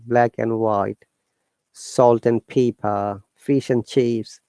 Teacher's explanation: So the rule is that we do not pronounce the D sound of and if it is in between 2 words